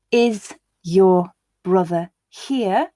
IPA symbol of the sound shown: ʒ